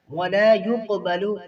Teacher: قاف میں یہاں پر قلقلہ ہو رہا ہے، دوسرا درجہ ہے